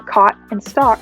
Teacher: the vowel sound ash is pulled toward the script a vowel sound position making the words cot and stock sound like caught in stalk